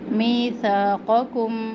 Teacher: क़ौफ़ और काफ करीबुल मखरज है। क़ौफ़ मोटा है और काफ बारीक है, तो दोनों का ध्यान रखें।